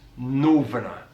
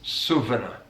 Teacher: different pronunciation features one that i want to pick out is the way that he uses v on the th